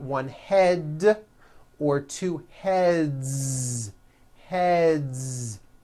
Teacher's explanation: the word head ends with a voiced d